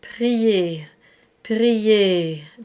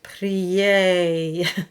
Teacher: So for example, in the word prier, prier, the A stays almost in the same space as I, prier. And if you open, you would get prier, and the diphthong would come in.